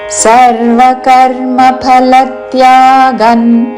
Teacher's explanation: అనుస్వారము త వర్గములోని అనునాసిక అన్ ఉచ్చారణ